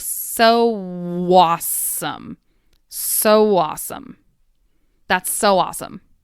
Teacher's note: The w intrudes between the so and awesome.